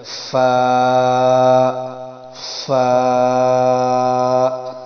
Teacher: فا کا طریقہ یہ ہے کہ اوپر والے دانت نیچے والے ہونٹ کے ساتھ لگیں اندر کی طرف. فا، فا جیسے ہم پھونک مارتے نا ایسے کر کے یہ فا.